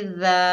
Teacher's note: एक अलिफ की मिकदार खींच कर पढ़ेंगे